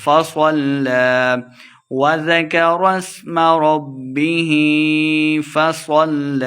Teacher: حرکات لمع کرنا ہے، ربہ فصل، صاد کو مٹا پڑھیں گے، لام مشدد ہے، صاد کو لام کے ساتھ ملا کے پڑھیں گے